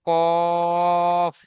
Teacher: অক্ষরটি পুর পড়তে হবে অর্থাৎ মুখ গোল হয়ে যাবে